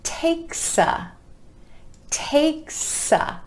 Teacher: Takes a. Again, that final s sound at the end of takes, linking over in front of the word a.